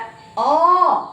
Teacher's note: அப்போ குறில் எழுத்துக்கள் அப்படின்னு சொல்லக்கூடியத ஒரு மாத்திரை அப்படின்னா ஒரு முறை கண் இமைக்கறதுக்குள்ள நம்ம அப்படின்னு சொல்லி முடிச்சரணும். ஆனா நெடில் எழுத்துக்களை ஆ அப்படின்னு நம்ம இரண்டு முறை கண் இமைக்கிற வரைக்கும் சொல்லலாம்